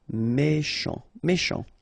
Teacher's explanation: Final T not pronounced. C-H together, sh.